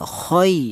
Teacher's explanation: ya mati yang didahului huruf yang berharokat fathah, dibaca lunak saja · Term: lin